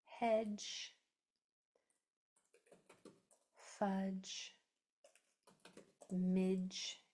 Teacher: the d is pretty much silent. It's just a stop sound, but it's where your mouth has to begin the ge sound. So it's technically in there somewhere, but we can just refer to it as silent because you don't really hear the d, only the ge.